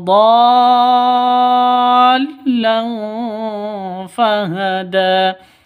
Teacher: Tanwin bertemu dengan fa, maka fa-nya cara bacanya samar, didengungkan. Samar disertai dengung, siap-siap ke huruf fa-nya. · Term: ikhfa hakiki